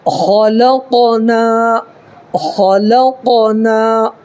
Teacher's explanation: یہ خا کو پر کرنا ہے اور یہ قاف میں قلقلہ کرنا ہے